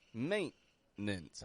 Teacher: note the glottal T in the middle of that word maintenance